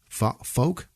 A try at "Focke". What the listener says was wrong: Yeah, F-O-C-K-E. That could be Fock. You're going Fokker, like Meet the Parents. You said Fokker. Fock.